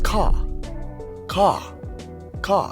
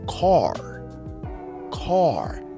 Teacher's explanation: in the British accent the r itself is not stressed but in the American accent car becomes car car you can hear the r